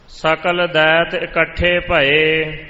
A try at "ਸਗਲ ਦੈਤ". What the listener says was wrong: ਸਗਲ ਦੈਤ ਸਗਲ ਗੱਗੇ ਨਾਲ। ਕੱਕੇ ਨਾਲ ਵੀ ਕਿਤੇ ਹੈ ਪਰ ਗੱਗੇ ਨਾਲ ਹੈ। ਸਗਲ ਦੈਤ ਇਕੱਠੇ ਪਏ।